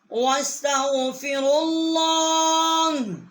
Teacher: را جو ہے ہم نے اللہ کی لام جو ہے اس کے ساتھ مشدد کیا ہے